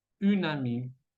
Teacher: une, se escucha la N, y se va a conectar con la A de ami